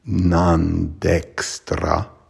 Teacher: Then we have a double N, Vibennī. The M before a D would be pronounced like an N, so it'd be non dextRā, and then the R is trilled, dextRā.